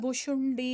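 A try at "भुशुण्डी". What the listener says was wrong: And the Bushundi short E. You just stretch this. Short.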